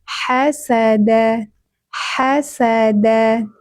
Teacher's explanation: Ha tenggorokan bagian tengah. Ha mengalir nafasnya dan suaranya.